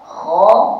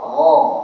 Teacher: Ha >> tapi dia atas kira makhraj yang samalah secara umumnya iaitu permulaan kerongkong. Tapi sebenarnya kha atas sikit gin bawah sikit.